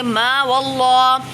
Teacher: میم کو 5 الف کھینچیں گے،